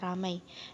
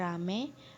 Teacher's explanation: Perubahan ini terjadi pada bunyi vokal rangkap ai ke vokal tunggal e. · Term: Monoftongisasi